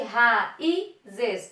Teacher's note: O I é forte, certo? Ele está formando um hiato sozinho.